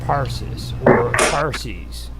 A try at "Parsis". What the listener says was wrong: As Parsons, you said Parsons, like Jack Parsons. Parsees.